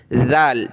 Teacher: اس پر ہم نے زبان نکالنی ہے، زبان کی نوک دانتوں سے باہر